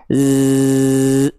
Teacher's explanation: huruf Z juga punya desisan tapi karakternya seperti lebah